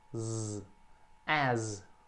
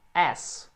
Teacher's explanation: apesar de ser um S, ele tem um som de Z no final